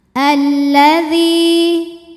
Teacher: Tadi sudah dijelaskan lam tasydid ini ada 2 lam sukun dan lam fathah. Lam yang sukun tidak dibaca sehingga kita langsung baca masuk ke lam kedua. Alladzi. Dhi mad tabi'i dhahiri karena ada ya sukun didahului baris kasrah. · Dhi mad tabi'i dhahiri karena ada ya sukun didahului baris kasrah. Maka huruf dzal panjang 2 harokat. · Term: alif lam syamsiyah